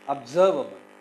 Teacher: It is observe. The second syllable is stressed.